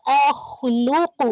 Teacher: ख मोटा होगा लेकिन हमजा नहीं होगा